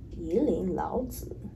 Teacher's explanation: when you've got two third tones, the first one will actually become second tone. So here, this will actually change and it will be going up to second tone.